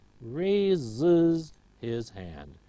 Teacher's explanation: Raise ends in a sibilant, so we have is